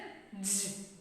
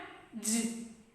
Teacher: That means a sound made by stopping the air stream. Stopping the air stream, then releasing it suddenly with an audible friction through the mouth. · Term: affricate sound